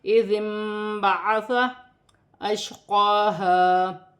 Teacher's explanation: شین ساکن ہے، قاف پر کھڑی زبر ہے، اسے بھی ایک الف کی مقدار کھینچ کر پڑھا جائے گا، یہاں پر الف مد ہے، اسے بھی ایک الف کی مقدار کھینچ کر پڑھا جائے گا۔